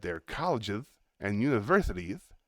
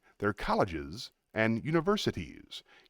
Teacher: You're telling me that they're colleges and universities, when actually they're colleges and universities. You're giving me a th sound instead of a nice clear s.